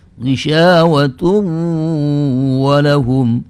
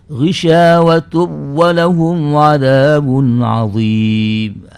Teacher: nun tanwinnya ghisyawatun itu menurut hukum jumhur ulama harus dibaca dengan idgham yang disertai dengan izharul gunnah. Artinya menampakkan gunnah, ada gunnahnya gitu.